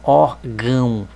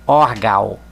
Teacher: por ele estar em cima da letra A quer dizer que o som da letra A tem que sair pelo nariz